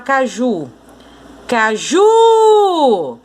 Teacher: A sílaba tônica é o ju. Então, se a sílaba tônica da palavra é a última, e esse última tem que ser contado de trás para frente, quando a sílaba tônica da palavra for a última, essa palavra é chamada de oxítona.